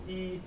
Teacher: when you say e your tongue will be up there the front and the top of your mouth